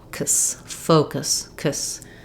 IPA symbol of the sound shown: əs